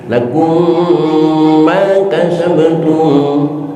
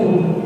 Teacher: bisa terjadi idgham mutamasilain, yaitu ketika mim mati bertemu dengan mim lagi. Lakum ma kasabtum, itu idgham mutamasilain.